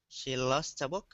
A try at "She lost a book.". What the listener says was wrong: There you go. That's the sound. Very smooth L sound.